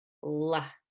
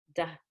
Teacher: I do use the tip of my tongue for the L just like I do for d da la but the shape of my tongue is gonna change